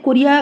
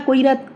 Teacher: করিয়া থেকে কৈরার ক্ষেত্রে আগে র এর পরে ইটা উচ্চারিত হয়েছিল তারপরেরটাতে কি হলো র এর আগে ইটা উচ্চারিত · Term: স্বরধ্বনির স্থানান্তর